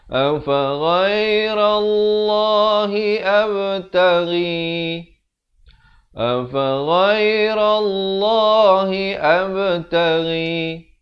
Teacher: Ghairallah, dibacakan tebal. Lafz jalalah ini 2 harakat.